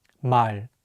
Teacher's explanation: tension in the back of your mouth to make it stronger in Korean the L Sound is much lighter without any tension · In Korean, the L sound is much lighter without any tension. So remembering where not to put the tension, especially at the end of the words, will be really helpful for sounding more natural in Korean.